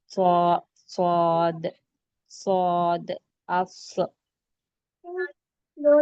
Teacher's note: हम स्वाद को मोटा पढ़ेंगे। इतना मोटा कि जो गाल है थोड़े से गाल को फुलाकर पढ़ेंगे। · صاد کو موٹا پڑھیں گے، اتنا موٹا کہ جو گال ہے تھوڑے سے گال کو پھلا کر پڑھیں گے